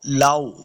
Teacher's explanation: واو کو جب پڑھیں گے دونوں ہونٹ گول کرنے ہیں